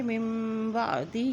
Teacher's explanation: ہا کے نیچے کھڑی زیر ہے، اس کو بھی ایک حرکت لمبا کریں گے